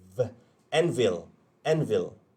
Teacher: Sebutannya N, vil. Vil, bibir bawah bertemu gigi atas. V, dan vibrate sikit.